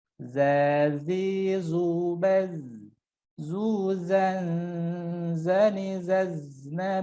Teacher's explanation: Sekali lagi, zai sama dengan sin dan shad, ujung lidah sejajar dengan ujung gigi seri bawah atau atas gigi seri bawah, ya. Zazi, zubaz, ya, seperti suara lebah. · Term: huruf zai